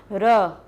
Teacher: रा बोलते समय थोड़ा सा कंपन हो रहा है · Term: लघुटित